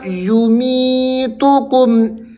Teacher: یمیتکم یا مدہ ہے، می کو آپ نے کھینچ کر پڑھنا ہے